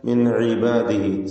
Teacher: സക്കിനതാനോൻ ശേഷം അയിന് ഇൽഹാർ ഹൽഖി നൽകി നൂനിനെ വെളിവാക്കുക, മണിക്കാതെ വ്യക്തമാക്കുക.